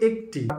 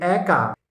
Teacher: হচ্ছে সেটি সংবৃত আবার যদি বলি একটি আবার যদি বলি একা একটিতে ঠোঁটের আকার কিছুটা ছোট একাতে ঠোঁটের আকার কিছুটা বড় · একটিতে ঠোঁটের আকার কিছুটা ছোট, একাতে ঠোঁটের আকার কিছুটা বড়, তাহলে সেখানে বড়টি বিবৃত, এ বিবৃত আর এ সংবৃত।